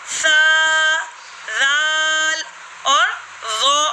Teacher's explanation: जबान का सिरा और ऊपर के दांतों के अंदरूनी किनारे से सा, जाल और ज़ौ अदा होगा